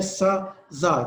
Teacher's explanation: इसमें आप रोकते नहीं है, फ्रीकेशन आती है